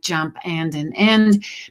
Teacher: omission of nasals in words like jump and an end because those nasals are actually swallowed up in pronunciation with nasalized vowels